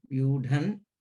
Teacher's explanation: you have to maintain the Mahaprana. It can't be Vyudan. So maintaining the Mahaprana, the Anuswara should come.